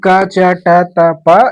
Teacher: ये दोनों हमारे अघोष व्यंजन में आते हैं। जब इनका हम उच्चारण करते हैं तो ये जो स्वर तंत्रियां होती है स्वर तंत्रियों में कंपन नहीं होता। यह केवल स्वास के सहारे ही इनका उच्चारण होता है।